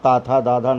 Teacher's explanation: दांतों से आपके जीभ टकराती है, इसलिए इनको दंत बोलते हैं